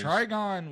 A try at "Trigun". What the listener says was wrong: Trigun. Trigun. Three guns. 3 guns.